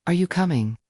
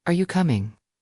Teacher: With a rising tone at the end, it sounded like a real question, "Are you coming?" But if she used a falling tone, it sounded like she already knew the answer or didn't really care.